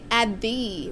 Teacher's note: you got to remember that the TH at the end and the T both get handled by the same flick on your teeth.